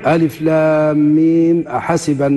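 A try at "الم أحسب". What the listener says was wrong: ألف لام ميم أحسبا. هذه طبعا كانك أنت يعني اعتديت بالأصل، الميم أنت بتحركها، مش بنحركوها بالفتح. ليش؟ لأن حركة الهمزة فتحة، نحركها بالفتح. ثم بعد ذلك إن اعتدينا بالأصل، شنو الأصل؟ السكون.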